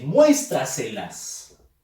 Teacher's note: En este caso dice muéstraselas. Fuerza de voz en mues. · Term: sobreesdrújulas